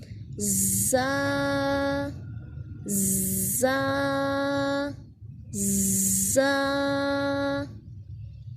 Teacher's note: जो ज़ा है इसको हमने दोनों दांतों को मिला के सीटी की आवाज़ पैदा करनी है और सख्ती से अदा करना है